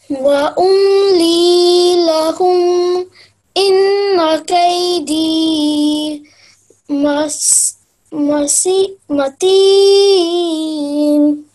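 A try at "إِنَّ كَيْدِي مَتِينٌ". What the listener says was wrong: Matin, but little longer this inna because 2 seconds. Inna, say Inna kaydi matin.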